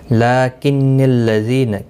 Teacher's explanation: لیکن الذین، کسی بھی حرکت والے حرف کو کھینچنا نہیں، لام کے اوپر کھڑی زبر ہے، اس کو ایک الف کی مقدار کے برابر کھینچ کر پڑھیں گے۔ ذی یا مدہ ہے، ایک الف کی مقدار کے برابر کھینچ کر پڑھیں گے۔